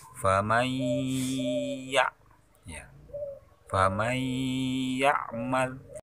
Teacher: suara nun mati masuk ke suara ya dengan berdengung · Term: Idgham Bigunnah